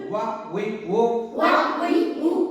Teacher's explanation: দুই ঠোঁটের মাঝের ফাঁক হতে আদায় হবে ওয়াও